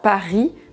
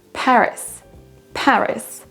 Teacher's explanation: Notez au passage que le R, je ne le prononce pas à la française, je ne dis pas Paris, mais R.